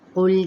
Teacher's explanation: अब यहाँ पे क़ाफ पुर है, मोटा अदा करेंगे , लाम को हिलाना नहीं है, सी पे याए मद्दा, रू